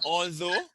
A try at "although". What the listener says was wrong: No, you're pronouncing with an H. Although. Not